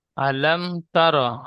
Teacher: আলাম মিম গুন্না হবে না।